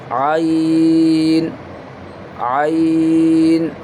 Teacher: یہ گلے کے بیچ سے حصے سے پروناؤنس کریں گے, یعنی وسط حلق یعنی مڈل پارٹ آف تھروٹ.